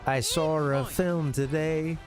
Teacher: to our ears I'm hearing an r in there at the end um but of course it's just that they're the vowel sound